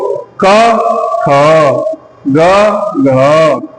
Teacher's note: पहले वाले एक वर्ण को बोलने पे कम वायु निकल रही है तो वो हो गया अल्पप्राण। दूसरे वाले में अधिक मिल रही है तो वो हो गया महाप्राण। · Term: अल्पप्राण और महाप्राण